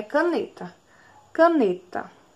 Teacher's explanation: paroxítona porque a penúltima sílaba é mais forte